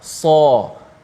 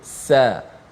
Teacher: Bunyi sad itu jangan tertukar dengan huruf sin, walaupun bunyi seakan sama dengan huruf sin, tetapi beza je sin dengan sad. Sad itu tebal, sin tu nipis. Sin kita sebut sebagai sa, anginnya berbunyi adapun sad so.